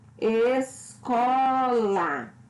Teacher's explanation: Escola. Ou seja, pronuncio com mais intensidade a sílaba có, que é a penúltima sílaba. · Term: Palavras paroxítonas